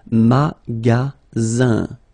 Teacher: Then you get the sound Z, alright? And then the ending here is IN, so it's nasal, it goes in your nose, and it's un.